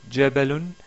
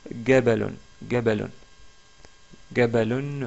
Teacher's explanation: dans certains dialectes, et je mentionne là le dialecte égyptien, on remplace le son ja, le ja par le son ga.